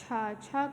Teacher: छ का उच्चारण तालू से होता है